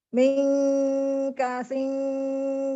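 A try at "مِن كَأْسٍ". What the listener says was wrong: Ini tuh Hamzah loh. Kak sing bukan kasing. Pas baca kak sing itu benar-benar berhenti semuanya. Mingka sing. Jadi berhenti.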